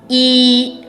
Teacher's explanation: un peu comme le i français seulement vous tirez dessus